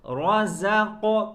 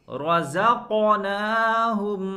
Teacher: وَمِمَّا رَزَقْنَاهُمْ، رزق، رزق، قاف کے اندر قلقلہ، آواز لوٹ کر آئے گی۔ رزق، را کے اوپر زبر ہے جس کی وجہ سے را کو پر کریں گے، زا کو صاف کریں، زا، رزقناہم، نون کے اوپر سکون ہے یعنی نون ساکن ہے، اور اس کے بعد لفظ فا ہے۔